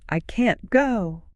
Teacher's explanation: The negative is super important information, so we make it long and strong. We stretch the vowel sound.